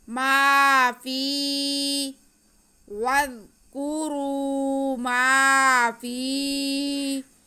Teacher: تو یہ الف مدہ ہے اس لیے میم کے آواز کو ہم کھینچیں گے۔ آگے فا کے نیچے زیر اور یا ساکن، تو یہ بھی یا مدہ ہو گیا، یا کی آواز فا کی آواز کو بھی ہم کھینچیں گے، ما فی واذکروا ما فی، 3 حرف مدہ اکٹھے ہو گئے ہیں تینوں ہی، یہ واو مدہ، یہ الف مدہ، یہ یا مدہ۔